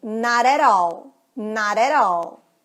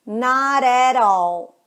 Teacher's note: Junta no flap T, junta no R de prato.